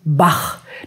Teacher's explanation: der achlaut das ist ein harter laut der hinten im Rachenraum gebildet wird